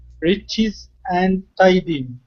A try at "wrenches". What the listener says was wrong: make sure to pronounce pronounce the n because if if not then you're saying wretches and wretches are completely different